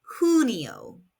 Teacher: In Spanish, the letter J is pronounced like an English H, and the U makes an oo sound.